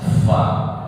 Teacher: bibir bawah dengan gigi seri atas